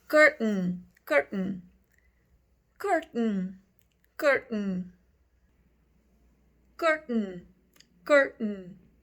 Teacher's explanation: é como se você não pronunciasse este TA para falar a palavra cortina em inglês